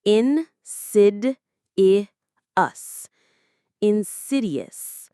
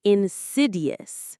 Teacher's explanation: The stress is on that second syllable.